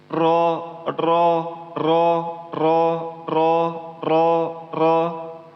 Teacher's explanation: Dia itu letaknya di hujung lidah seperti ini dan di pangkal lidahnya itu naik. Pangkal lidah naik ini itu maksudnya ialah hurufnya di antara O dan A. Berarti dia tebal dia. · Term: huruf ro